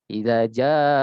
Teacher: Idza ja'aka, ini terlalu panjang. Jadi cukup 2 ayunan, 2 alif atau 4 harokat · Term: mat wajib mutasil